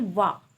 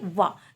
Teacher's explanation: वाह का उच्चारण स्थान दंत ओष्ठ माना जाता है